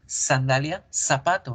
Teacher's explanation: yo tengo la palabra sandalia que se escribe con ese y la produzco igual que el zapato que se escribe con z sandalia zapato no hay diferencia en el español latino en el